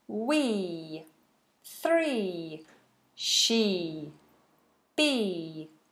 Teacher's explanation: one it's a smiley happy vowel we three she be so it's smiley smiley and long